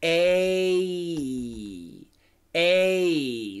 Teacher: the perfect long a is actually a diphthong and we say a a so gave the perfect pronunciation is